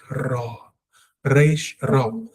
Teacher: Your tongue needs to vibrate. There must be a vibration of the tongue for Reish